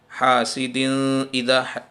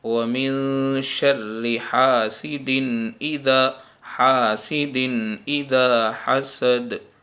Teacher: 2 زیر کی تنوین کے بعد حمزہ آیا ہے، اس لیے یہاں پر اکفا نہیں ہوگا، یہاں پر گننا نہیں ہوگا، حاسد اذا ایسا پڑھنا بالکل غلط ہے۔